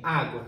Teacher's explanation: tô fazendo a separação silábica olha para o fim eu tenho o u que é uma semivogal é um som mais fraco e o a que é uma vogal é um som mais forte portanto nós estamos diante de um ditongo crescente